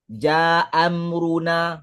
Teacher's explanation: dibuang Hamzah pertama jaamruna tinggal Hamzah kedua saja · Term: isqat